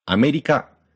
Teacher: In the Japanese word America, the first syllable is low, and the last three are high.